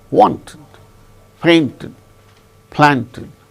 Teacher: the stress should be only on the first syllable